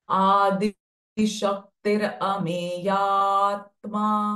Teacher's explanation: instead of saying atma, we will prolong this ameya sound for a little bit longer.